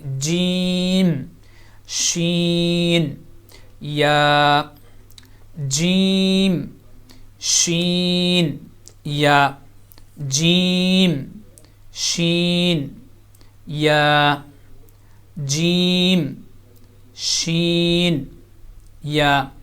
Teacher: تو یہاں پہ یہ درمیانی حصہ جو زبان کا، یہ اسی طرح درمیان سے آپ اوپر کی طرف تالو کے بالکل سینٹر میں لگائیں گے تو وہاں سے یہ تینوں لیٹر ادا ہوں گے، جیم، شین، یا، جیم، شین، یا، جیم، شین، یا، جیم، شین، یا۔ تو یہ 3 لیٹر زبان کے درمیانی حصے سے ادا ہو رہے ہیں